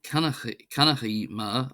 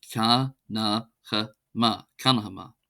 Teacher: So, as I say, if it was pronounced on its own, it would be kanachi, but when there's a pronoun coming afterwards, in the future tense, you reduce it to the sort of schwa sound, so it becomes ka, na, ha, ma, kanahama, etc.